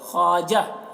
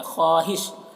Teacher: یہ واو کو نہیں پڑھا جائے گا